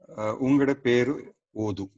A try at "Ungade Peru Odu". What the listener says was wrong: Idu, it doesn't end with a full U. It is Peru Odu.